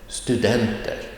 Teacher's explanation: Accent 2 är en fallande ton. A falling tone or a dropping tone. En fallande ton, den går ner.